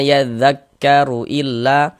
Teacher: huruf ro kalau dia memiliki harakat domah juga dibaca tebal dibaca tabhim